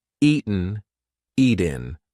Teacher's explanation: That T is followed by a weak N sound.